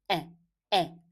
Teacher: And then this one, it starts with alif, with hamza and fatha. So we make the glottal stop sound and we make it with fatha. So it is a, a.